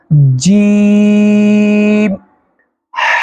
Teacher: जुबान का जो बीच है उसके ऊपर तालुवे में लगाएंगे, फिर सख्ती के साथ पढ़ा जाएगा।